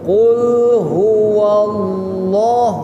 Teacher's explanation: Qul huwallah loh tafhim tebal